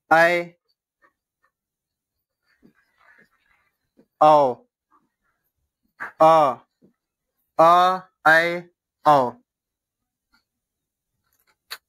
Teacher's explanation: वे स्वर जिनके उच्चारण में मुख आधा से अधिक खुला होता है उन्हें अर्धविवृत स्वर कहते हैं।